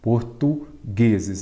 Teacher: A sílaba forte é a penúltima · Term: Paroxítona